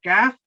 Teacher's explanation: अगर आपका Airways block नहीं हो रहा, जुबान पीछे से बिल्कुल ऊपर नहीं उठी, तो फिर ये कैफ अदा होगा